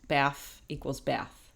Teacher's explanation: The written symbol th pronounced as f in the ends of words.